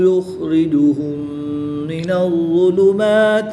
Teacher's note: میم ساکن کے بعد دوسری میم ہے تو یہاں پر ادغام شفوی ہوگا، غنہ کر کے پڑھیں گے